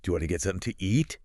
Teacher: Do you becomes just a quick weak sound.